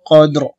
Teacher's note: রজের রি, কদেরি, অকফের সময় র সাকিন করতে হবে। কদ্র হবে, শব্দটা হবে কদ্র, প্রথম দালে কলকলা হবে, পরে রটা আসতে উঠবে, কদ্র। ইন্না আনজালনাহু ফি লাইলাতিল কদ্র।